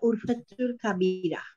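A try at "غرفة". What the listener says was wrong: Yes, this is not urfa. This is urfa with wain. Fi tilka urfatul kabira.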